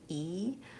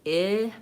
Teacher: And the main difference between those two vowels, E is tense. It's the highest, most front vowel for my tongue, and my lips are wide and smiling, E, versus I, my tongue is just slightly lower, it's more relaxed, and my lips and face are more relaxed too.